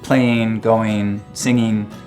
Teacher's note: one of the things we start to hear in the mountain west generally is ing endings pronounced as in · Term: ing endings pronounced as een